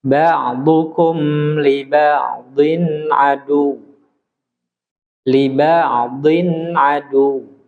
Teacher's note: Maksudnya mimnya harus jelas berbunyi mim tanpa dikolkolah. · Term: Idhar